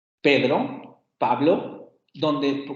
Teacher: pedro en la segunda vocal adquiere una tonicidad un poco más alta porque estamos jugando con las relaciones de prominencia entre los acentos